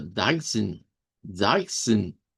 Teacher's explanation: Nosotros escuchamos como que hubiera una E, pero no la hay. El sonido que escuchamos, que es como la E, es el sonido de la N.